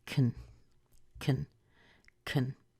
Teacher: almost always be very small so can becomes very small and the way you do it is to remove the vowel put a schwa there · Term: reduced